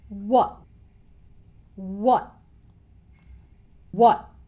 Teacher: The next word is what, but he doesn't really make the t sound at the end of what. He stops himself just before he makes the t sound.